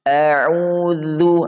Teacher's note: Huruf dzal, bukan dal tapi dzal. Dzal itu ujung lidah bertemu gigi seri atas.